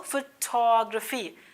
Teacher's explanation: stress second syllable पे है